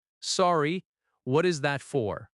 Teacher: Notice the gentle rising intonation at the end because it is a question.